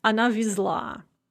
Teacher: as soon as we add the rest of the endings, the z is pronounced as z. It gets its voicing back.